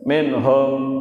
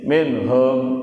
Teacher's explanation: Minhum, nah, nun sukun atau nun mati bertemu dengan ha, nggak boleh mendengung itu, karena hukum bacaannya adalah bacaan izhar, harus jelas, bacanya harus jelas, nggak boleh mendengung, nggak boleh juga bacanya samar-samar.